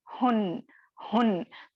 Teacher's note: तो तनवीन की आवाज में आपको क्या हो रहा है, लास्ट में आपको नून साकिन की आवाज आ रही है।